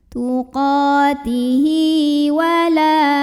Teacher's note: La mad tabi'i karena ada alif yang didahului fathah, maka baca panjang lamnya 2 harokat.